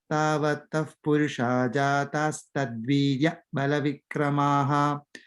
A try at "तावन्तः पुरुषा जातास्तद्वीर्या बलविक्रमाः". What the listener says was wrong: The second line is tavanta. In sound is there. Tavanta.